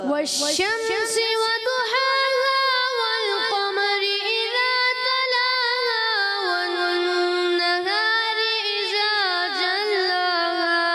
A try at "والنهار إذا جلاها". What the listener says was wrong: اذا کی ادائیگی, ذال کی ادائیگی کلیئر کریں دوبارہ.